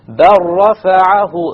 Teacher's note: You drop the lam completely.